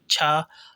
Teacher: ये स्पर्श संघर्षी प्लस महाप्राण भी है। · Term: स्पर्श संघर्षी महाप्राण व्यंजन